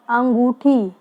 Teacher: नाक और मुंह दोनों से आवाज आ रही है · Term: अनुनासिक